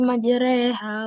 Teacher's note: Imalah adalah memiringkan bunyi fathah ke arah kasroh yang berbunyi re.